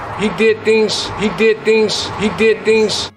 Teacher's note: With devoicing, we use the voiceless equivalent, which is an S. So the Z sounds at the end of words turn into more of an S sound. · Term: devoicing of word final Z